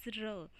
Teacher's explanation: इसमें जो हमारी टिप ऑफ द टंग है वो रोल बैक कर जाती है या पीछे की ओर घूम जाती है towards the back part of the teeth ridge. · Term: पोस्ट एल्वियोलर